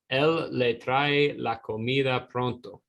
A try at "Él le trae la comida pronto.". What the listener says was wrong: Perfecto.